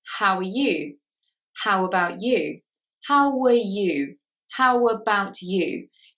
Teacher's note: Can you hear that a W sound intrudes?